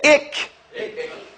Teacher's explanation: Shiddah is from the sound, the sifat of kaf. Has to come with some strength. Say ik. See, it goes in.